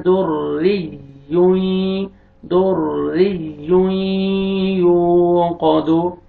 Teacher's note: दाल को रा के साथ मिला के पुर करना है और रा के नीचे कसर है आपने रा को बारीक पढ़ना है